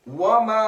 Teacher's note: واو ہونٹو والے حروف میں ہے، ہونٹو کو مکمل گول کر کے ادا ہوگا